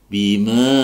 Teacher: Arkasahum bima, ya, bima, ingat di sini ada fathah diikuti alif, maka dibaca mad tabi'i, dipanjangkan dua harokat atau satu ayunan